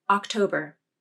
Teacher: Notice how the jaw drops less for the unstressed AH vowel. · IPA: /ɑ/